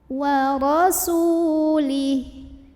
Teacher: Wa rasu, su mad tabi'i, karena ada waw sukun sebelumnya dhammah, maka cara membacanya sin yang baris dhammah dipanjangkan 2 harokat.